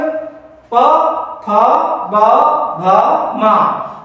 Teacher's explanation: प फ ब भ म दोनों होठों से बोला जाता है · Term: प वर्ग